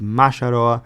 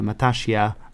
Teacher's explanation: you have the plosive stops of P and B. A lot of the time in ABP, especially word initially, these become M instead.